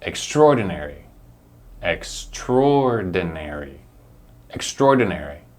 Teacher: we pronounce the tror with a lot of stress